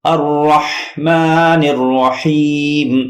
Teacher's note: ہا کا مخرج بیچ حلق، یہاں پہ زور دیجئے.